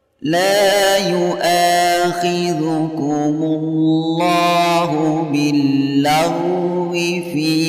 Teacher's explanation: Cara membacanya bunyi fi dipanjangkan sampai 5 harokat.